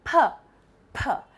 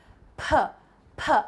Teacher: for the voiceless sounds, you can just feel the puff of air. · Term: voiceless consonant sounds